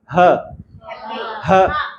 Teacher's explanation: ग्लॉटस में हो रही है इसलिए उसको नाम दे दिया ग्लॉटर · यहां से साउंड निकल रहा है। मतलब जो हमारे वोकल कॉर्ड्स है वही एक्टिव आर्टिकुलेटर्स है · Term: ग्लॉटल साउंड